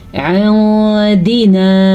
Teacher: इंदिना, नून साकिन के बाद हरूफ इख्फा में से दाल आया हुआ है तो हम नून साकिन को छुपा के पढ़ेंगे लेकिन गुन्ने के साथ पढ़ेंगे